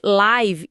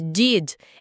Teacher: Só que no inglês, aquele I de live e de did é o que a gente chama de som curto e relaxado. A sua mandíbula cai um pouquinho, a língua relaxa, é um som rápido. Quase um staccato musical, né?